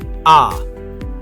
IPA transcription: a